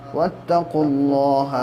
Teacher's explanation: اللہ کے لام سے پہلے جب پیش ہوتا ہے پیچھے والے حرف پر تو اللہ کا لام پر پڑھا جائے گا · وَأْتُوا الْبُيُوتَ مِنْ أَبْوَابِهَا وَاتَّقُوا اللَّهَ لَعَلَّكُمْ تُفْلِحُونَ، اب یہاں پہ قاف کے اوپر پیش ہے اور واو ہے الف ہے لیکن ڈائریکٹلی قاف کو لام سے ملا دینا ہے